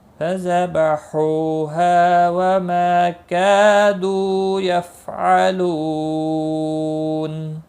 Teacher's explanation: یفعلو، لو واو مدہ ہے اور نون وقف کی صورت میں نون ساکن پڑھا جائے گا، وقف بالاسکان ہوگا۔ مد العارض وقفی ہوگا، 3 سے 5 الف کے برابر کھینچ کر وقف کریں گے